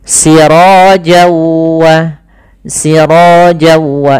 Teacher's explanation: cara membacanya langkah pertama namanya awalnya siroan ketemu dengan wau tanwinnya awalnya bunyi n nah kemudian ketemu wau maka n-nya hilang masuk ke wau jadi waunya double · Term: idgham bi gunnah